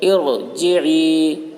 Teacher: را ساکن سے پہلے زیر عارضی ہے، اس لیے را کو پر پڑھیں گے. ارجعی، جیم کے نیچے زیر ہے، زیر کو جلدی پڑھیں، تھوڑا بھی نہ کھینچیں، معروف پڑھیں، مجہول آواز سے بچیں. یا ساکن سے پہلے زیر ہے، اس لیے یا مدہ ہوا، یا مدہ کو ایک الف کے برابر کھینچ کر پڑھیں گے.